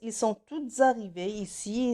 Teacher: Tout avec ES, ils sont toutes arrivées ici. C'est la liaison de S avec le verbe qui commence par une voyelle.